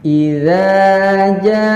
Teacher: panjang dulu ja-nya baru membaca huruf hamzahnya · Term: 5 harokat